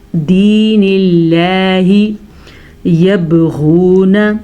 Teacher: अगर लफ्ज़ अल्लाह से पीछे वाले हर्फ के नीचे ज़ेर होगी तो लफ्ज़ अल्लाह बारीक पढ़ा जाएगा, जैसा कि हमने यहाँ पे पढ़ा दीनिल्लाही यबगून। बा के ऊपर कलकला हो रहा है, हाँ, क्योंकि बा हरूफ़े कलकला में से है